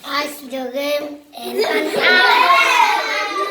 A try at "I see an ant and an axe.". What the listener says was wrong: You say I see the game. No, you say I see an ant say I see an ant.